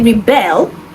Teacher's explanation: when I say rebel the stress on the second syllable · Rebel is someone who rises in opposition and the stress is on the first syllable. But when I say rebel, the stress is on the second syllable and it means to rise in opposition. That becomes the verb.